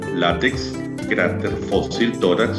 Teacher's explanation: Llevan la mayor fuerza de voz en la penúltima sílaba. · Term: palabras graves